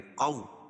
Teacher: واو ساکن سے پہلے زبر ہو تو واو لین ہوتا ہے، اس کا نرم آواز کے ساتھ جلدی ادا کریں گے